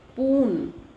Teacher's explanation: a child might pronounce the spoon as poon because S sound is eliminated. So that is total dissimulation.